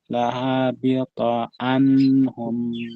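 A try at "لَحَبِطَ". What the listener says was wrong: lahabilto. Pendek Pak, lahabilto.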